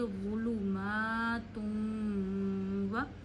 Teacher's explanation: दो पेश को वाउ से मिलाते हुए खींचेंगे क्योंकि ये इदगाम का कायदा है